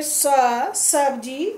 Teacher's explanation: ये दंत से बोले जाने वाला है